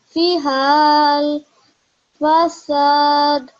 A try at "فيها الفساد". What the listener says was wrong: That was almost there. What you did was this alif is going to be acting as a blank alif, so we're not going to read that. So it will be read as فيها الفساد.